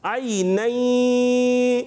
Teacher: نون ساکن تنوین کے بعد یا موجود ہے تو آپ دیکھیں نون کی آواز یا میں مل گئی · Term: ادغام